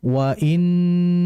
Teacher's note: jika ada nun bertasydid, kita harus menahan terlebih dahulu dengan dengungan. Ya, tidak terburu-buru dalam dengungan. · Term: ghunnah